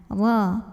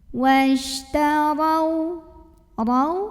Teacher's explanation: Huruf ra dibunyikan secara tafkhim karena ra-nya berbaris fathah. Maka cara bacanya ditebalkan.